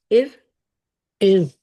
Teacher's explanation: را پہ کوشش کرے کہ اس پہ قلقلہ نہ ہو، لائک زبان نہ ہلے، ار ہی رہے، ٹھیک ہے. ار کی طرح نہ ارکب.